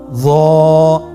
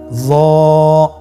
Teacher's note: জিহ্বার আগা, সামনের উপরের 2 দাঁতের আগার সঙ্গে লাগিয়ে উচ্চারিত